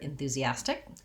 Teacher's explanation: enthusiastic has second to last syllable stress so the ah syllable is the stress syllable and this is one pattern that happens in a lot of